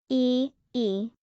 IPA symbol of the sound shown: iː